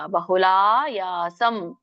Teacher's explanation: ಸಾಹಂಕಾರೇಣ ವಾ ಪುನಃ ಕ್ರಿಯತೆ, ದೀರ್ಘ ಇದೆ ತಕ್ಕೆ ಎಳಿಬೇಕು. ಬಹುಲಾಯಾಸಂ, ಲಾ ದೀರ್ಘ ಯಾ ದೀರ್ಘ